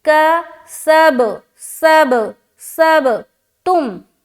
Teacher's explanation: با میں ہم پھر قلقلہ کریں گے،